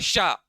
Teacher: ये तालु को छूते हुए हवा निकलनी चाहिए